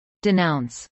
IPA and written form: dɪnˈaʊns (denounce)